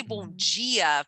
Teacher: the brazilians have a lot this g sound like they say bongia for good morning